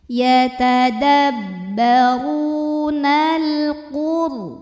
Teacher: Maka lam sukun dibaca jelas, tidak ditahan, bunyi lamnya jelas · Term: idhar qamari